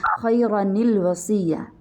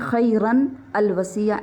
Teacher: اس کو ملانے کا طریقہ یہ ہے کہ ہم نون جو تنوین میں ہے وہ ساکن ہے، اس کو کسرہ دے دیں گے. باقی تنوین میں سے ایک حرکت باقی رہ جائے گی، چاہے وہ پیش ہے، چاہے وہ زبر ہے یا زیر ہے، ایک حرکت باقی رہ جائے گی، خیرا، خیرا پڑھیں گے.